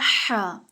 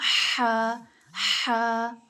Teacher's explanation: हलक के दरमियानी हिस्से यानी वस्ते हलक से हा अदा होता है